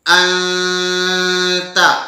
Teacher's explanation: نون مخفی ادا کرتے وقت نون اپنے مخرج سے نکل کر خیشوم کی طرف منتقل ہو جاتا ہے، یعنی ناک کی طرف آواز چلی جاتی ہے. یوں کہیں گے کہ نون مخفی ایک ایسا حرف ہے نہ تو مکمل طرف لسان سے اور نہ مکمل خیشوم سے نکلتا ہے.